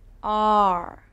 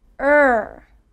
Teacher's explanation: it is a deeper sound and my mouth is smaller. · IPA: /ər/